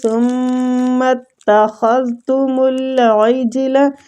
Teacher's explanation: عین حلق وسط الحلق سے